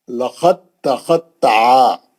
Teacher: آپ لقد بول کے آپ دال کا خلخلہ کر دیے تو غلط ہو جاتا، دال تا کے اندر چلے گئی اور تا مشدد بن گئی متحرک سے، اور آپ تا سے ہی پڑھیں گے، دال نکل، دال ادغام کر گئی، دال غائب ہو گئی، لقد تخطع۔